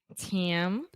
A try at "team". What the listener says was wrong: you were saying TM. So you're saying E, but it's just E the whole time. So you're saying team.